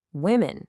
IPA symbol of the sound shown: ɪ